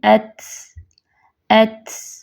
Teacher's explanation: پہلے شدت کی وجہ سے آواز بند ہو جائے گی اور آواز سخت ہوگی، اور پھر سانس جاری رہنے کی وجہ سے، ہمس کی وجہ سے آخر میں ایک کمزور سی آواز نکلے گی، آہستہ سی پست ہو کے۔